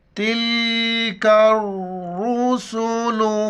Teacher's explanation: تا کو لام کے ساتھ ملائیں گے اور چوٹی کاف ہے باریک کر کے را کے ساتھ ملائیں گے، بیچ میں الف اور لام کو نہیں پڑھیں گے۔ را پر شد ہیں، جس لفظ کے اوپر شد آئی جو 3 دانت والا ہے وہ لفظ سختی سے پڑھا جاتا ہے۔